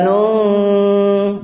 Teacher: Jadi wa kadzalika nun, bukan nung ya. Bukan nung tapi nun di antara idhar dan idgham. Ya, di antara jelas sama memasukkan huruf. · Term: ikhfa